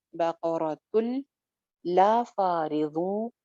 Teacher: तुल यहाँ पे भी इदगाम है, लाम के साथ इदगाम है बगैर गुन्ना के